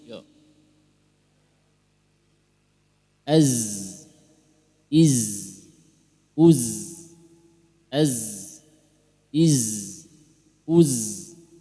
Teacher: Nah, jadi di samping dia desis ada getaran pada tenggorokan. Az, nah, itu huruf za.